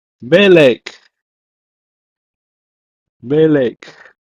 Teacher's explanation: So the only thing you need to remember about Segolate nouns is there's a helping vowel called the Segol helping vowel, which was added to create a second syllable to make it easier to read.